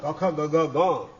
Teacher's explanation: એ કંઠમાંથી ઉત્પન્ન થાય એટલે કંઠીય કહેવાય